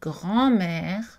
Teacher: voyelle orale alors que dans grand-mère c'est la même chose mais la différence c'est que la voyelle est nasale dans grand-mère